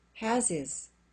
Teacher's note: we keep the H in has because has is the main verb and it's stressed but the H in his is silent